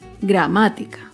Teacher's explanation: Gramática se acentúa en la antepenúltima sílaba. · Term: palabra esdrújula